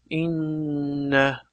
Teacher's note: Demak, mana shu yerda tashdid qilib o'qilganda inna deb havo burnimizdan chiqib, biroz g'unna bilan, ya'ni dimoq bilan o'qiladi. Hamda bu yerda aytib bering, mana shu faqatgina mim hamda nun harflari bir oz, ya'ni bir harakat miqdorida ushlab turiladi.